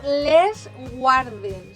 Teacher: en aquest cas és sonora perquè la G també se sonoritza.